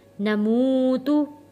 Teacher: واو پیش مو، نمو، تا پیش تو، نموتو، واو ساکن ہے، واو ساکن سے پہلے پیش ہے تو ہم نے ایک الف کے برابر اس کو کھینچ کر ادا کیا